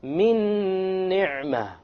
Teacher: You drop this end sound, you take this meme and you associate it or you merge it with that noon and you add a ghunnah